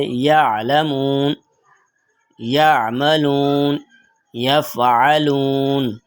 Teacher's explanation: عین کی آواز کو نرم اور بغیر جھٹکے کے پڑھتے ہیں، جیسے یعلمون، یعملون، یفعلون۔